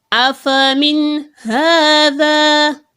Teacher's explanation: Now you are of course to make it obvious to separate it and do not make gunna whilst reciting it. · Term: izhar